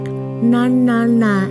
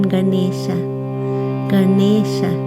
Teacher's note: Ganesha is said with a retroflex n so the tongue rolls back